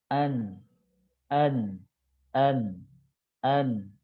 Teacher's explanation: Berarti ini bukan gusi ya. Jadi ujung lidah bukan dengan gusi tapi dengan langit-langit ya. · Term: huruf nun